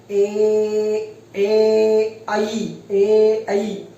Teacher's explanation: एक तो कंठ और तालु, तालु के ऊपर जीभ लगती है तब ए आई बोला जाता है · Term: कंठ तालु